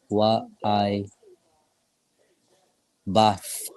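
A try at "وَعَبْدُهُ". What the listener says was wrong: So not I bath, but I bad. I bad wa. So wa I bad wa.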